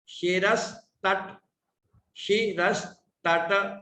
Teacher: वो दंत या सकार है, अर्थात उसके उच्चारण के समय जीभ दांत को टच करती है। दोनों ऊपर के दांत, नीचे के दांत, उन दोनों के बीच में आती है।